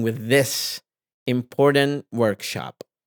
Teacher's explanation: I don't stress important as much as I stress Workshop because the word important is in the adjective so it receives